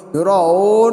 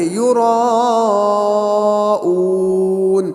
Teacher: وہاں پر اون کے اندر واو مدہ ہے، ہم اس کو صحیح سے ادا کریں گے، ہونٹ گول ہوں گے، دیکھیں گے وہاں پر یراؤون، اون ایسا نہیں بلکہ یراؤون۔